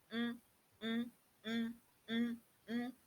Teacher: the two lips come together, there is a complete closure, hindrance to the air coming from the lungs from escaping freely through the mouth, and rather the air is released through the nose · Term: nasal sound